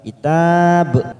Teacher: karena kita berhenti di situ maka kita pantulkan huruf ba